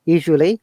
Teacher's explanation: the A is schwa sound that is not pronounced at all